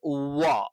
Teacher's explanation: അപ്പൊ ചുണ്ട് വൃത്താകൃതിയിൽ വക്രീകരിച്ചുകൊണ്ടായിരിക്കും നമ്മൾ ഉവ്വ എന്നുള്ള ഉച്ചാരണം നടത്തുന്നത്.